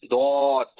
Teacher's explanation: জিহ্বার গোড়ার কিনারা সামনের উপরের এক পাশের দাঁতের গোড়ার সঙ্গে লাগে